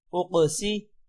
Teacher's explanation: حمزہ قاف پیش اق، سین زیر سی، اقسی۔ قاف پر قلقلہ بھی ہوگا، قاف موٹا بھی ہوگا